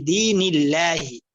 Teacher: আল্লাহ শব্দের আগে জের আসছে, যেমন নুনের মধ্যে জের আসছে, এই জন্য পাতলা করে বলতে হবে। ফি দীনিল্লাহি, দীনিল্লাহ বলা যাবে না।